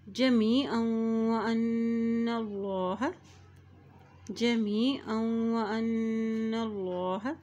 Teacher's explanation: अल्लाह के नाम से पहले ज़बर आ गया है तो अल्लाह का नाम भी मोटा अदा किया जाएगा